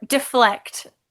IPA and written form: dəflect (deflect)